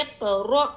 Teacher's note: یہاں دیکھیے قاف پر جزم ہے، قاف قلقلہ کا حرف ہے، قلقلہ کریں گے، قلقلہ میں آواز ڈبل آتی ہے۔